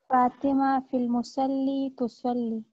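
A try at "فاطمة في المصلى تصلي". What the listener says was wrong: This is not musalli. This is alif maksura. It is pronounced like alif. Fil musalla tusalli.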